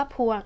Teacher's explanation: พวงอ่านว่าพวงเป็นสระอัวซึ่งไม่ได้อ่านออกเสียงควบกันเลย